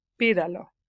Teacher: So you hear 3 to 1, and the 3 or the third syllable from the last is stressed. So you'd have to put a written accent anytime the third to the last syllable is stressed.